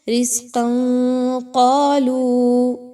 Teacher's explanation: ثمرات الرزق، ملا کے پڑھنا ہے تو رزقا قالو، قاف پر تنوین کے بعد قاف کا حرف آ گیا تو تنوین کے بعد قاف آئے تو اخفا کیا جائے گا، تنوین کی آواز کو ناک میں چھپانا ہے اور نون کو ظاہر کر کے نہیں پڑھنا